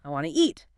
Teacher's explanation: The T sound at the end of want basically disappears or blends into a quick new sound.